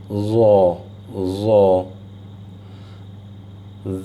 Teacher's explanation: And for za, this is a heavy letter, so again you stick your tongue out like dal for that, and for za, the back of your tongue rises towards your palate, and that becomes za. Dal, zay, za.